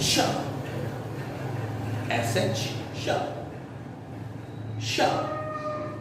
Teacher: श इसमें तालु में जीभ लगती है, और जब हम बोलते हैं अगला वाला श बोलते हैं तो इसमें तालु से और थोड़ा जीभ पीछे चली जाती है, श, षट्कोण।